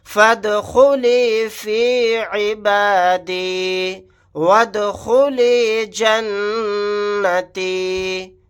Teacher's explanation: یہاں پر بھی دال ساکن ہے, قلقلہ کر کے پڑھیں گے. نون کے اوپر تشدید ہے, یہاں پر غنہ کر کے پڑھیں گے